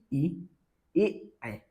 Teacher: अग्र स्वर में संख्या, यानी बोलते समय जीभ के अगले भाग पर प्रभाव पड़ता है, जीभ का ये जो अगला हिस्सा है इस पे प्रभाव पड़ता है, ध्यान रखना कैसे।